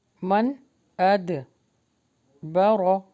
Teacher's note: با جو ہے وہ باریک پڑھیں گے اور رو ہیوی